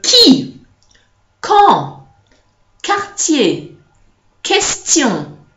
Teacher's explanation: there's no w inside. It's just a k, clear, clean, crisp K sound.